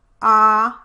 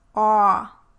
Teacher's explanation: try making the ah vowel like in father, and then round and protrude your lips, and raise your jaw, just slightly